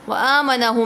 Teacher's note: तनवीन के बाद वाऊ आ रहा है तो इदगाम भी हो रहा है। व आम आनहु मीम साकिन के बाद दूसरी मीम आ रही है तो इदगाम शफा भी हो रहा है।